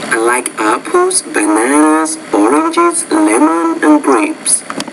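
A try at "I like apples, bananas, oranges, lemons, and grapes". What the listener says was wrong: Yes, that was good tone. I like that.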